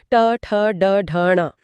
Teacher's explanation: ट वर्ग उच्चारण स्थान मूर्धा ट ठ ड ढ न इसमें जीभ मुड़कर कठोर तालू को छूती है।